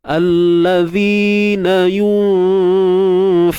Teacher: Fa ni huruf yang nipis, maka dengung kita pun turut nipis.